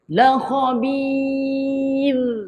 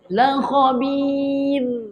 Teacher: Sebab di akhir kalimah tu huruf ra'. Ra' mati sebelumnya baris bawah kita kena nipiskan. Senyumkan.